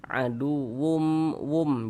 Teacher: Bunyi tanwinnya masukkan ke huruf mim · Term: idgham bi gunnah